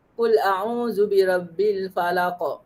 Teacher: Kuat lantunannya, huruf qalqalah mati di hujung bacaan dan wakaf